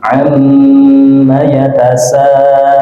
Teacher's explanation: nun tasydid dan mim tasydid, maka kita baca dengung